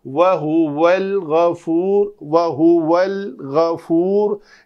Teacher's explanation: یعنی لام کے مخرج کو چھوڑنا نہیں ہے، اگر چھوڑ دیں گے تو وہ قلقلہ ہو جائے گا یا قلقلے کی مشابہت آ جائے گی۔ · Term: لام ساکن